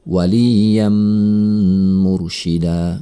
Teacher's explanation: ada tanwin bertemu dengan mim bertasydid maka ini adalah Idgham Bighunnah tanwin tersebut melebur kepada huruf sesudahnya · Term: idgham bi gunnah